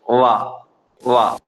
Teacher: ആ 2 മുൻപല്ലിന്റെ താഴ്ഭാഗം താഴത്തെ ചുണ്ടിന്റെ നനവുള്ള ഭാഗത്ത് മുട്ടിച്ചുകൊണ്ടാണ് വാവ് പറയുന്നത്. മുകളിലുള്ള 2 മുൻപല്ലുണ്ട്, ആ മുൻപല്ലിന്റെ ഏറ്റവും താഴത്തെ അറ്റം, താഴത്തെ അഗ്രം താഴെ ചുണ്ടിനെ ഉൾഭാഗത്ത് മുട്ടിച്ചുകൊണ്ടാണ് വാ പറയുക മലയാളത്തില്.